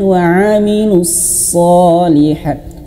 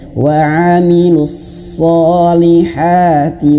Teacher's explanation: Shotnya jangan lupa ya ditebalkan ya.